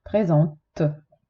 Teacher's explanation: T, consonante, quindi poi c'è una E muta. Questa T si sente perché poi c'è la E muta, altrimenti non si sentirebbe.